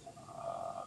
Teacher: That's vocal fry, where you kind of crack or whatever.